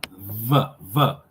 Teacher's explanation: So it's not a bilabial, it's a labiodental. Because you're going to use one lip, your lip and your teeth, labial and dental. So it'll be your lip and your teeth. · Your lip tucks under your teeth. The letter V, labiodental, fricative, would be the friction.